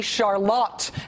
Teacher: Michiganders pronounce this city Charlotte. Emphasis on the lot.